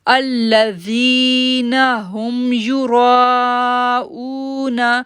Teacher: را کو ہم جو ہے وہ 6 سیکنڈ کے لیے کھینچیں گے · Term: بڑی مد